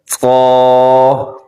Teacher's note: طا بھی موٹا پڑا جاتا ہے، اگر طا موٹا نہ ہو تو یہ تا بن جائے گا، تو اس کی پوری کوشش کریں کہ یہ حرف موٹا پڑا جائے۔